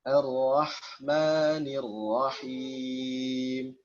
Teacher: sembunyikanlah getaran huruf ro jika dia bertasydid